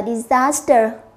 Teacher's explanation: trọng âm của nó sẽ rơi vào âm 2